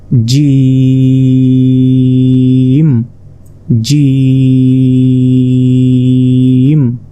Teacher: জিমটি উচ্চারণ হবে জিহ্বার মধ্যভাগ, তার বরাবর ঠিক উপরে তালুর সঙ্গে লাগিয়ে,